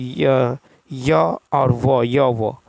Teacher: अर्ध स्वर के उच्चारण में जिह्वा स्वरों के उच्चारण की तुलना में अधिक ऊपर की ओर उठती है, किंतु इतनी ऊपर तक नहीं पहुंच पाती कि वायु अवरुद्ध कर सके